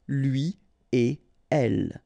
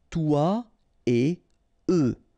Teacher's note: So no links after et. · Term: no liaison